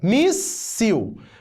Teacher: Primeira sílaba, mi. Segunda, sil. É a penúltima sílaba que é a tônica. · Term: sílaba tônica